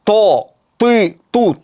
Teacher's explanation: tovush ozgina yig'ilib keyin chiqadi, bu itbaq.